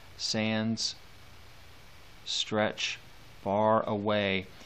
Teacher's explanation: that last syllable that has such duration that that sort of echoes off into the distance